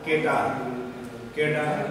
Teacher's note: পদ মধ্যস্থিত অঘোষ ধ্বনি ও ঘোষ ধ্বনি রূপে উচ্চারিত হয়